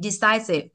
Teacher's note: Thì trọng âm rơi hai ạ.